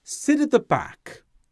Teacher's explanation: with down intonation such as sit at the back this indicates certainty or authority or closure when the person says sit at the back they are sure